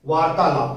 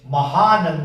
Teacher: आ आ से मिलकर के आ हो जाएगा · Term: दीर्घ संधि